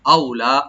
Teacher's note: আও এখানে হরফে লিন সফট করে পড়ো, লাম ওপেন করে এক আলিফ টানবো।